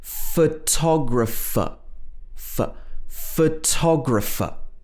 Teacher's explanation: Or photographer. In photographer, both the first O and the final ER are pronounced as a schwa.